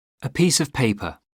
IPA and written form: ə piːs ɒv ˈpeɪpə (a piece of paper)